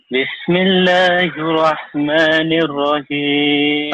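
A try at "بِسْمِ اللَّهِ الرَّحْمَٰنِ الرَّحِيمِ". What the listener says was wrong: Tasjidnya ketinggalan tuh. Bismillah. La-nya ditahan dulu. Bismillahirrahmanirrahim. Bismillahirrahmanirrahim.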